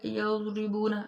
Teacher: جب ہم ضاد ادا کریں گے، اس کو موٹا بھی پڑھیں گے، اور یہ جو زبان کا کنارہ ہے، ایک سائڈ کا، ایک جانب جو ہے زبان کی اوپر والی داڑھوں کے ساتھ ٹکرے تو ضاد ادا ہوتی ہے